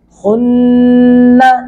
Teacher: नून पे शद्द है, ज़बान तालु के साथ लगेगी।